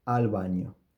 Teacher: when the B is preceded by a vowel is pronounced like the approximants